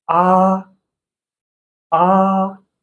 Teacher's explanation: this is the high flat tone. We also call it the first tone